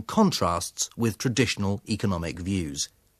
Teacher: His intonation falls, the pitch and music of his voice get lower, and he gets quieter before he introduces the next section.